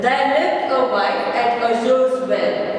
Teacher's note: There is unstressed, lived is stressed.